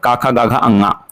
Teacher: ये कहां से बोला जाएगा तो कंठ से बोला जाएगा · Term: क वर्ग